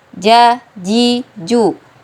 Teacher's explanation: tengah lidah bertemu dengan langit-langit bagian atas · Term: huruf Jim